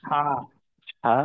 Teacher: আইন এবং হা, এই দুইটাই কিন্তু হলকে আরেকটু চাপ রাখা দরকার। হা অন্যথায় হা আইনটা অনেকটা হামজার মতো হয়ে যাওয়ার একটা সম্ভাবনা থাকে, আর হাটা হা গোল হার মতো হয়ে যাওয়ার।